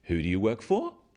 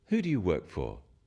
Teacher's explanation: When you ask people questions about themselves in English, use a falling tone. It sounds friendlier.